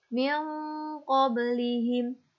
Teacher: Nun sukun bertemu dengan huruf qaf, dibaca samar